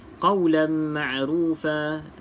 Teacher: Tidak selari selepasnya bukan lam ataupun ra, maka baca dengan 2 harakat. Di sini idgham ma'al gunnah ataupun wajibul gunnah sebab mim bersabdu.